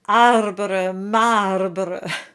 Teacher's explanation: arbre and marbre are virtually identical and both have that bright forward sound we have in French.